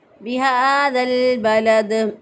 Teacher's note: دال ساکن حالت میں دال پر قلقلہ ہوتا ہے، اس لیے یہاں پر ہم نے قلقلہ کر دیا